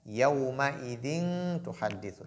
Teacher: Lorsque tanwin vient avant ta ou lorsque ta vient après tanwin, on applique ce qu'on appelle al-ikhfa qui est la dissimulation.